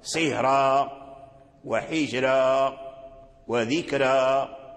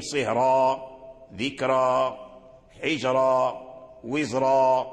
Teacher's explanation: إذا قرأ الإنسان بالترقيق، مثلا إذا قرأ سهرا وحجرا وذكرى فهذا صواب، إذا قرأ بالتفخيم سهرا، ذكرى، حجرا، وزرا بالتفخيم فهذا صواب